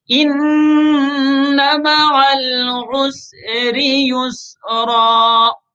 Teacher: را کے نیچے زیر ہے تو را کو باریک کر کے پڑھیں گے